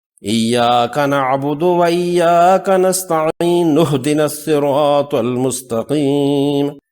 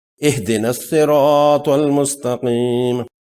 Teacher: وصلاً یہاں ملا کر پڑھنے پر یہ حمزۃ الوصل حذف ہو جائے گی، گر جائے گی